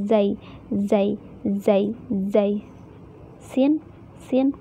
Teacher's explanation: ujung lidah bertemu dengan ujung gigi seri bawah